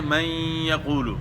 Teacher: جس طرح ہم پڑھتے ہیں من یقول، یہاں ادغام مع الغنہ ہو رہا ہے